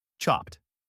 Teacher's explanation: In chopped, the verb chop ends in a voiceless P sound, so the id sounds like a T.